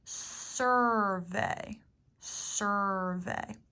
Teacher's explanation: even really hear the u sound like in the word survey it's almost like we take out the you and you just go from s to R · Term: controlled vowels